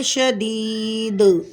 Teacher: حالت وقف میں یا مدہ کے بعد والا حرف ساکن ہو رہا ہے، تو یہاں پر اس یا مدہ کو ہم 3 الف کے برابر کھینچ کر پڑھیں گے، اور دال ساکن ہوگا تو دال کے اندر ہوگا قلقلہ کبرا۔ حالت وقف میں پڑھیں گے شدید۔